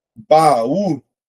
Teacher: De fato, ela é uma oxítona, né? Porque eu tenho a última sílaba tônica.